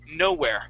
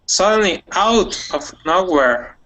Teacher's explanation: the accent's going to be at the very beginning